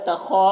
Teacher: خا کو پر پڑھیں گے، حروف مستعلیہ میں سے ہے، اور الف مدہ ہے، ایک الف کے برابر کھینچ کر پڑھیں گے.